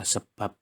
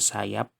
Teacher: B pada kata sebab termasuk konsonan bilabial bersuara, sedangkan P pada kata sayap adalah konsonan bilabial tak bersuara